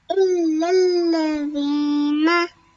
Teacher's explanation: we have to press on these two lams properly because they are both mushaddad